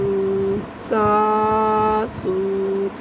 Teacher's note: سین پڑھتے وقت آپ نے سیٹی کی آواز کی طرح سے پڑھنا ہے